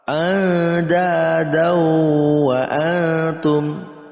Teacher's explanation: Ikhfa pada nun mati bertemu dengan dal, ini ikhfa. Dibaca samar dengan eng.